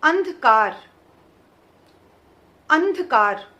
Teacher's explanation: आ के बाद आधे न का उच्चारण आ रहा है। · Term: अनुस्वार